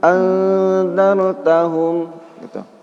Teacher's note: itu ikhfa, bacaannya samar-samar dan didengungkan